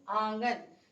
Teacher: निरनुनासिक में हवा केवल मुख से यानी मौखिक रूप से बाहर आती है, जबकि अनुनासिक में हवा नाक व मुंह दोनों से बाहर आती है। तो ये जो आंगन है ये अनुनासिक का उदाहरण है।